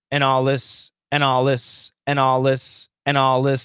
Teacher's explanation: are the strong sounds right so the n killed the d the l is a strong sound the l killed the th · So the pronunciation was, and all this, and all this, and all this, and all this, and all this. There was no TH. There was no TH that we can hear. · You can see his tongue making the TH sound, but what's happening is the dark L inside is reducing that TH to the point where we can cancel it.